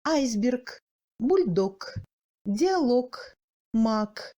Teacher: Le G s'assourdit en fin du mot